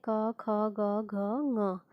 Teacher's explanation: ये कहाँ से बोले जाते हैं? कंठ से बोले जाते हैं। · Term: कवर्ग